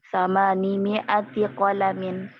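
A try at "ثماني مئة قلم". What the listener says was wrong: mimnya di situ ada dipanjangkan ya. Pupin di situ samani jadi ya-nya di situ sudah tidak perlu lagi ya. Sudah tidak perlu. Jadi sisa nunnya saja. Karena ada dua cara membaca, samanin atau samani gitu ya.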